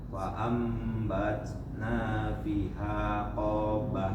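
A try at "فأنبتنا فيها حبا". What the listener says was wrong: Nah, apa hurufnya? Hab. Ada tasydid di atas ba.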